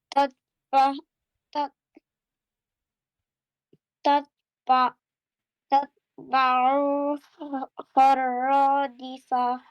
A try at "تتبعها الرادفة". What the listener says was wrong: Yeah, good job. But one thing, Ain must not be stretched, otherwise it's perfect. تتبعها الرادفة.